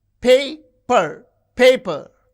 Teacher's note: You can see the first syllable is stressed